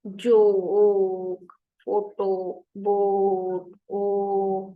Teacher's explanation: Then vibrate your vocal cords and you push air out of the mouth. O is a mid back rounded vowel. O. अब आप खुद ही देखें, ओ आपकी जो है ना दरमियान में चली गई टंग, ओ, ओ, और राउंड हो गया, लिप्स भी राउंड है.